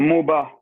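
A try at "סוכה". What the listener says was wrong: Non, c'est un S.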